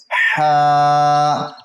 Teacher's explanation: وسط حلق سے ادا ہوتا ہے